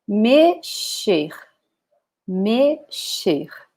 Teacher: In Portuguese is mexer, mexer. So again, the X with the sound of sh